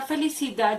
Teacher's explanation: La palabra felicidad lleva la acentuación tónica en la última sílaba, que es da.